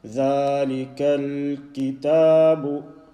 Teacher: Remember, it's joining onto the lam. Say in such a way that you do not vowelize this lam